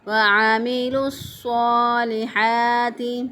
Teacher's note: ہا کو وسط حلق سے اسی طرح جس طرح عین کو ادا کریں گے ویسے ہی ہا کو ادا کریں گے